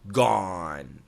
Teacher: G-O-N-E has an A-W sound, gone, gone. When you do the A-W sound, the tip of your tongue must be all the way in the bottom of your lower jaw.